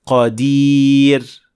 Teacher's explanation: बारीक यानी तरकीक वाली रा के साथ हम देखते हैं कि जुबान का पिछला हिस्सा ऊपर नहीं उठता जो इस बारीक आवाज को पैदा करता है।